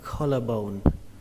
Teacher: Trọng âm của từ này rơi vào âm đầu tiên, âm kho. Âm kho trong từ cá kho.